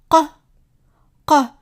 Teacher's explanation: So the letter that we see here is the letter C and it makes this sound C which is similar to a Q but pronounced in the back of the throat